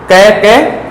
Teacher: क कंठ, कंठ से उच्चारित होता है